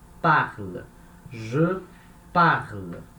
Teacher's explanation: Então, a gente já viu que palavras que terminam com e, sozinho, sem acento, são palavras, a última sílaba é fraca, então a sílaba tônica ela anda uma casa para trás